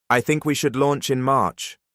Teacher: said with rising intonation, as if asking permission rather than making a recommendation